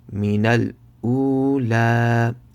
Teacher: Make sure to stretch the waw sakin for 1 second